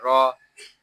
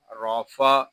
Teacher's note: را کو پر پڑھیں گے کیونکہ را کے اوپر زبر ہے